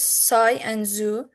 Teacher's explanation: S and z as in sigh and zoo are alveolar fricatives. The tip of tongue is brought towards the alveolar ridge. They are sharper than in a number of other languages